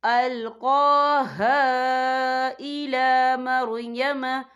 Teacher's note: قوف کے اوپر کھڑی حرکات ہے، تو ہم یہاں 2 یا 3 حرکت کے برابر کھینچیں گے